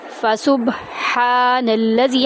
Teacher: ہا کو ہم وسط حلق سے ادا کرتے ہوئے ایک الف کے برابر لمبا کریں گے، نون کو لام میں داخل کریں گے.